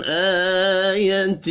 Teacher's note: حمزہ کے اوپر کھڑی زبر ہے، ایک الف کے برابر کھینچ کر پڑھیں گے